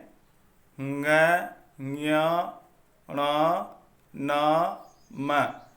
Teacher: ङ, ञ, ण, न, म और अनुस्वार नाक से उच्चारित होने के कारण नासिक्य वर्ण कहलाते हैं।